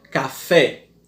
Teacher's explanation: Vocês estão vendo aí que a sílaba tônica é fé